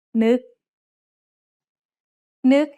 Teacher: น ึ ก has an initial low-class consonant and a final stop that makes it a dead syllable, plus a short vowel that makes it a high tone.